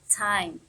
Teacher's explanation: We pronounce as T a voiceless alveolar plosive.